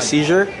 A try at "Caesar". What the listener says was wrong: Caesar. Every time you say Caesar, it's Caesar.